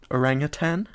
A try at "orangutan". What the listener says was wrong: You put a G, didn't you? Everyone puts a G, including myself, I admit. But there is no G at the end.